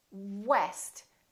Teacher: we round our lips and the lower lip doesn't touch anywhere